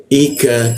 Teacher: Wal ika hamzah posisinya di tenggorokan bagian bawah dia. Ika ka di siku tenggorokan lidahnya kita turunkan. Ada hembusan udara ya ketika membuat cek ka nya.